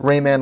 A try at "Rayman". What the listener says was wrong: You keep saying Rain Man, it's Rayman. It sounded like you said Rain Man. Definitely Rain Man.